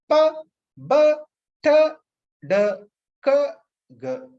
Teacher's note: They are sounds made when the air pressure behind a complete closure is suddenly released like an explosion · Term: plosives